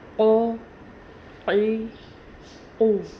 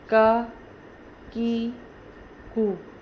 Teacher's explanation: جو دو نقطوں والا قوف ہے اس کو تھوڑا موٹا کر کے اور حلق سے ادا کیا جاتا ہے، اور جو دوسرا کاف ہے اس کو آرام سے پڑھا جاتا ہے۔ اکثر لوگ یہ غلطی کرتے ہیں کہ ان دونوں کو ایک ہی تلفظ سے پڑھتے ہیں۔